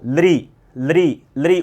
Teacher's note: ल उच्चारण करते तो किसको स्पर्श करती है? ये जीवा दांत को करती है।